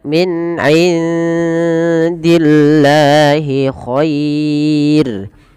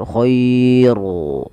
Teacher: Dan rnya ini tidak boleh ditebalkan tapi dibaca dengan tipis dan kita namakan dengan ro tarqiq.